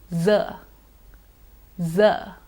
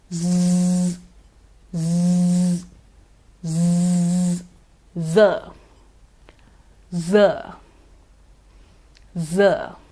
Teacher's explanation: in this sound there is a definite vibration of the vocal cords it's a voiced sound